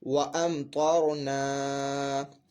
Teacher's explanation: اب یہاں پہ جو ہے میم ساکن کے بعد جو ہے حرف با اور میم کے علاوہ حرف یعنی طا ہے، تو یہاں میم ساکن میں اظہار شفوی کا قاعدہ ہوگا اور میم ساکن میں غنہ بھی نہیں کیا جائے گا۔ یہ طا حرف مستعلی میں سے اس کو پر پڑھیں گے